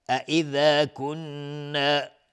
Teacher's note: نون مشدد 2 حرکت غنه میدیم